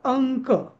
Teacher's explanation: इथे अनुस्वाराचा उच्चार क ख ग मधला न होतो अंक होतो अंक होत नाही अंक होतो. पंचा आता इथं जो